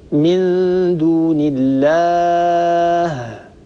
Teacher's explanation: الهاء تخرج بالتقارب الشديد بين الوترين الصوتيين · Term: الهاء الساكنة